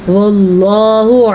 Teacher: لفظ اللہ کو پر پڑا کیونکہ لفظ اللہ سے پیچھے زبر ہے